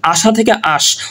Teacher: আশা উচ্চারণ করলে কিন্তু স্বরধ্বনির আমরা কিন্তু দৃশ্যমান একটা দেখব, কিন্তু এখানে হয়ে গেছে আশ। অর্থাৎ আশা থেকে আশ, ওই যে স্বরধ্বনি যেটা ছিল সেটা কিন্তু এখানে লোপ পাচ্ছে। অর্থাৎ সেই লোপ পাওয়ার যে জায়গাটা সেটা কিন্তু শব্দের শেষ থেকে হচ্ছে। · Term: অন্ত স্বরলোপ